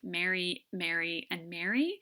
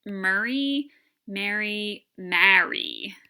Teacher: So for the Iowans, these three words sound exactly alike: Mary, Mary, and Mary. In many parts of the East Coast of the United States, these are three different vowels. So if I don't screw this up too bad, something like Murray, Mary, Marry, something like that.